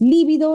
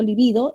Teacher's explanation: Si es lívido es esdrújula, si digo libido es grave y son palabras diferentes.